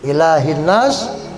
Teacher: Panjang laknya. Karena harokatnya berdiri. Fathah tegak.